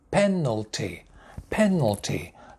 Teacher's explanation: The first word, penalty, three syllables, one, two, three, penalty, penalty. The stress, main stress at the beginning, penalty, penalty.